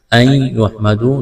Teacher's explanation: نون ساکن کے بعد یا ہے، یہاں پر ادغام کریں گے، آواز ناک میں چھپائیں گے، نون کو نہیں پڑھیں گے۔